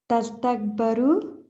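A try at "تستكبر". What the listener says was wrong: Tu. Remember the U in the beginning?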